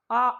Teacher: पूरा मुख खुलता है और पूरा विवृत बन जाता है